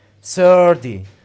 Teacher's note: you can change it into flap T